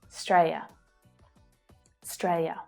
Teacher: So the final ia is reduced down to ya.